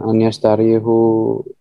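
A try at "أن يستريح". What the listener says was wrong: ayastariha bacanya patah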